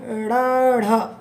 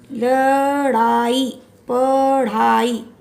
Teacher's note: जब आप बोलेंगे तो क्या होगा, ड़, ढ। जिसके उच्चारण में जीभ की नोक झटके से नीचे गिरे, र, ढ बोलते हुए जीभ ऊपर जाती है फिर झटके से नीचे आ जाती है, उसे उक्षिप्त व्यंजन कहते हैं।